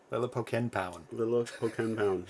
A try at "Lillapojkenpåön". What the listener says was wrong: But you don't pronounce the J's like that. Yeah, you don't say the J's.